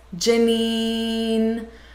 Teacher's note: the lingering sound, Janine, how she draws out that sound to indicate she wants more information